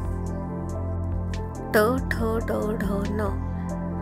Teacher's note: यांना मूर्धन्य म्हणतात कारण यांचा उच्चार जीभ मूर्धाला लागल्याने होतो